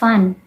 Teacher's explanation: And in sound the English, the tip of the tongue touches the upper gums. The air from the lungs passes out through the nose, and voice is produced before the sound and is not palatalized, as with new at the end of a word, especially after a short vowel, and before a pause, N is made longer.